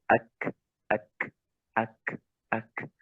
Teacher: Huruf kaf itu dia nempel, lepas, ya. Tidak dibuat-buat pokoknya.